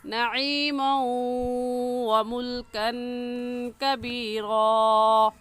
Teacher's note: عین حلق کے درمیانی حصے سے نکلتا ہے، نکال کر پڑھیں گے نعیما، اور اس تنوین پر بھی غنہ کریں گے کیونکہ تنوین کے بعد حروف یرملون میں سے واو آ گیا ہے، تو غنہ کرنے کے ساتھ ساتھ ادغام بھی کریں گے